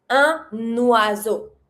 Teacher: So you pronounce your un, and you're going to repronounce your N from un to follow your following word.